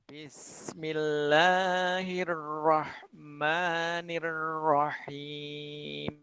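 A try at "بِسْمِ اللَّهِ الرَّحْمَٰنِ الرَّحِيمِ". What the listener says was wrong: Ninya mungkin agak ditekan ya. Agak ditekan, kemudian diusahakan yang keluar itu bunyi Hirrahmanirrah. Coba sedikit ditekan lagi. ketika membaca Rohmani itu mungkin begini.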